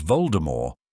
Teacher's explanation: it should be said as Voldemort without the T sound at the end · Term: T at the end